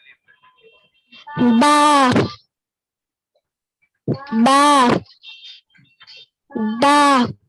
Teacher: बा, बा, बा, बा को पूर पढ़ा जाता है, नहीं बा पूर नहीं पढ़ा जाता, ठीक है, हल्की आवाज से पढ़ा जाता है